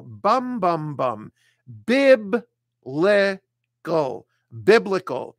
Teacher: It's a three-syllable word. You put the stress on the first syllable. Bum, bum, bum.